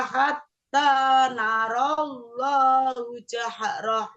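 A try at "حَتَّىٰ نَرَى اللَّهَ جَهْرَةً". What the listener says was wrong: Ya, masih hu Bu tadi. hu. Coba dipersani dulu. Narolha itu ha ya. Narolloha. Ibu sambil melihat tulisannya.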